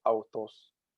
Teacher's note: the pitch remains the same in the word. And this is just sort of a variety of the acute accent as it occurs directly before certain words. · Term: grav accent